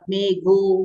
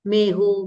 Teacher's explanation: मेघ का मेहो हो जाएगा घ को ह हो जाएगा मेघो मेहो मे बसे बोलते है ना मारवाड़ी में मेह बरसे